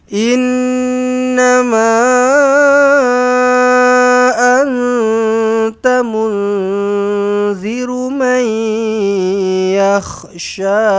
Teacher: Dia bukan yahsha, dia yakhsha. Yakh ada bunyi kahak dia tu.